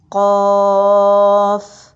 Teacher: تو زبان کی جڑ اس کوے کے ساتھ تالو پہ لگے گی جو نرم تالو ہے۔ قاف، ادا کر کے دیکھیے۔